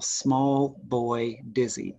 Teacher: Small and boy and the first syllable of dizzy can't all be stressed. So boy gets subordinated to small and to the first syllable of dizzy